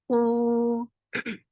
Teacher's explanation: Circle your lips and make it 2 counts long.